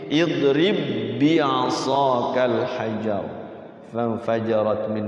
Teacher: salah kalau bacanya diqalqalahkan jadi tidak ada qalqalahnya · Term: idgam mutamasilan